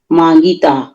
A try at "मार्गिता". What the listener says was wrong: मार गीता, मांगीता नहीं है। नहीं तो मांगीता, ये मांग धातु है कहीं यहाँ पर? मार्ग धातु है, मार गीता।